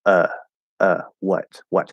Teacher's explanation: it's the fully enunciated version of what we call the schwa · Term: upside down v sound